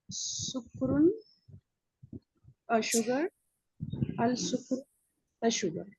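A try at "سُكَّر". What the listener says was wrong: Yes, you need to add tashdid, okay? Sukkarun, as-sukkaru.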